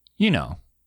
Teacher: it with a downward intonation, you know, you're asking for agreement